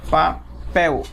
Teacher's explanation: quando você fala o pel, você fala ele com mais intensidade